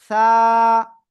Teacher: জিহ্বার আগা সামনের উপরে দুই দাঁতের আগায় লাগিয়ে নরম করে আমরা 1 আলিফটা নিয়ে উচ্চারণ করব